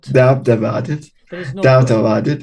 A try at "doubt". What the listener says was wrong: No. The b is silent. You just write Yes, you just write it, but not say it. Doubt.